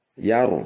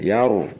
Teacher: Perhatikan ya bunayyaru, di situ ra sukun didahului harokat fathah. Yaru mencucu ya, tebal.